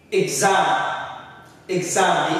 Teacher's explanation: they tell is what we expressed hotel we have exam exam the x which is the first syllable is like not stressed and then the final syllable the second one is what stress